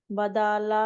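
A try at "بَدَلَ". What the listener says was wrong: బదల దీర్ఘం లేదు. ఎక్కడా దీర్ఘం.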